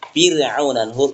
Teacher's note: Kenapa dibaca tipis? Karena bertemu huruf ain. Huruf ain itu bukan huruf istilah, huruf istifal.